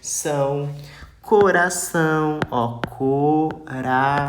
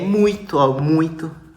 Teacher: ditongo nasal é pronunciado pelo nariz